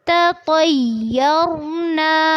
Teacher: تا کو باریک پڑھنا ہے اور ساتھ ہی جب تو کو آپ پڑھیں گے تو آپ نے اس کو پر کرنا ہے۔ یہ کمبینیشن تھوڑا سا ڈیفیکلٹ ہوتا ہے لیکن اس کو آپ نے اچھے سے پریکٹس کرنی ہے، تطیرنا، اور دھیان رکھنا ہے کہ یا میں شدت نہیں ہوگی، اس کو نرمی سے ہی پڑھنا ہے، تطیرنا، اور را پر ہوگا، را ساکن سے پہلے کیا ہے؟